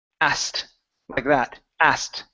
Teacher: we actually get rid of the K we don't pronounce the k sound